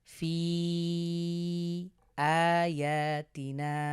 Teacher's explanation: লম্বা হামজা এসেছে বিধায় আমরা এটাকে তিন আলিফ লং করে পড়বো